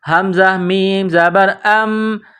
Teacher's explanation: حمزہ کو میم کے ساتھ پلس کریں گے۔ حمزہ میم زبر ام، اور آواز ناک میں چھپائیں گے، غنہ کریں گے